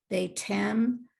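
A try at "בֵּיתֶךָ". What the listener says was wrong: Not Beitem. What happened to the inside the final chaf?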